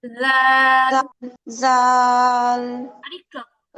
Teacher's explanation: আচ্ছা তারপরে আপু জাল জাল >> এটা আরেকটু নরম হবে জালটা আরেকটু নরম হবে জাল জাল >> মানে হচ্ছে জিহবাটা জিহবাটা একদম নরম থাকবে জিহবার আগাটা উপরে দুই দাতের আগার সাথে হালকা লাগবে